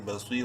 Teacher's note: صاد کو منہ بھر کے پڑھتے ہوئے ایک الف کے برابر لمبا کریں گے یا مدہ کی وجہ سے، بصیر، رادو پیشرون، بصیرون، وقفن، بصیر۔